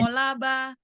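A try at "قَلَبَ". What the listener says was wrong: Ulangi, ko-nya tidak terpisah. Kolaba.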